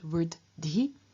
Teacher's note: What happens here is that dh is a sound that is both voiced and aspirated, and it passes on both its voice and its aspiration to the t at the beginning of ti, changing that into dhi. And in front of the dhi, the first dh loses its aspiration, and so we get vrdhi.